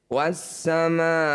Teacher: Mad fungsinya untuk memanjangkan huruf di bawahnya. Jadi kita tambah panjangnya jadi 6 harokat. Awalnya hanya 2 harokat saja.